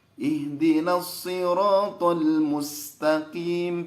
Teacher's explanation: Itu tetap tebal. Nah, qaf itu harusnya tipis.